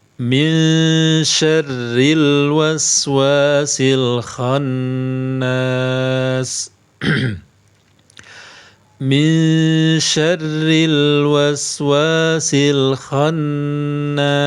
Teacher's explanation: Nun sukun bertemu shin, hukumnya ikhfa. Hukumnya ikhfa, dibaca samar. Samarnya tipis.